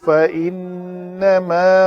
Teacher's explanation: فَإِنَّمَا نون مشدد پہ غنہ کیا